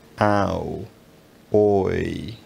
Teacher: All of these diphthongs are raising diphthongs. The tongue gets higher in the mouth as you're pronouncing them.